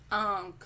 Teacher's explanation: जब अनुनासिक का प्रयोग करते हैं तो मुंह के साथ साथ नाक से भी ध्वनि निकलती है। · आपने मुंह के साथ नाक का भी स्वर लिया है ना, नाक की सहायता ली